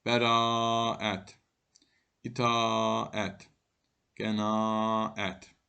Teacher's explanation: a ə yanaşı saitlərinin işləndiyi sözlərdə a səsi uzun tələffüz olunur